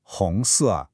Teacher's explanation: The first character, Hong, has that second tone, the rising one, and the second character, Se, has the fourth tone, that falling one